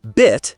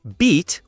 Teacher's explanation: They differ only in the vowel sound, right? Right. One is short, bit, the other is long, beat